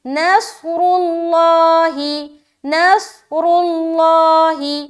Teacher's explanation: صاد کو موٹا رکھنا ہے، را بھی موٹا، لفظ اللہ کا لام بھی موٹا